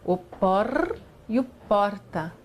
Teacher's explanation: O movimento da língua é quase que enrolado. Quando se fala por, veja, a língua se enrola um pouquinho. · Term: retroflexão